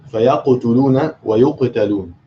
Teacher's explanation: The qaf here is in the middle. So it's the lowest level of qalqala because you're not stopping on it.